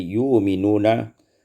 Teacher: ibdal hamzah waw, ditukarkan hamzah waw menjadi yu'minuna